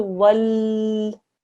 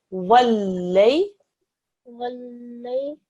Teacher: you must press down on the lam and spend a second on it, but don't drag out the sound. Don't do wal.